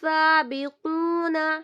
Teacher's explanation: سین الف کو 2 count stretch کریں گے اور با کو 1 کاؤنٹ اور واو مدہ کو 2 کاؤنٹ اور نون کو پھر سے 1